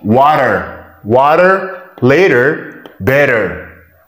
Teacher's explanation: whenever we see t between two vowels we pronounce like d soft d · T between two vowels, we pronounce like D soft, soft D, okay? Whenever we see T between two vowels, we pronounce like D, D soft, water, water, later, better, right?